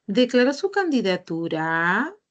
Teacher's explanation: entonces el tono final va a ser hacia arriba